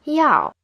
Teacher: 要 is in the fourth tone. When you pronounce it, it should start high and fall low.